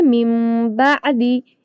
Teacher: یہاں پر نون کی آواز میم سے بدل جاتی ہے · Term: اقلاب